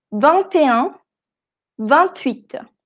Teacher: cuando decimos 21, siempre va a sonar la T. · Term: la liaison